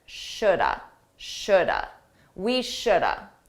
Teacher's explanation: Native speakers, we combine this to sound like shoulda. Shoulda. Notice that L is silent.